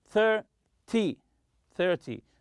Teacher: in 10 numbers, such as 20 and 30, always stress the first syllable.